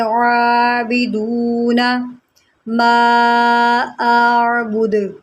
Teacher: عین کو اس کے مخرج سے ادا کریں، حلق کے درمیان سے ادا کریں